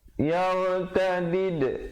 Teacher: ra di situ dibaca tebal. Yaw, jangan baca yar, tak betul.